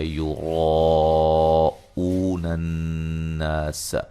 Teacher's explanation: را کو موٹا ادا کریں گے